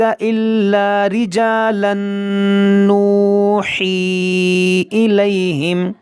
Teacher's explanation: ارسلنا من قبلک الا رجالا نوحی الیہم، یہاں پر دیکھیں رجالن، یہ تنوین کے بعد نون ہے، یہاں پر ادغام کریں گے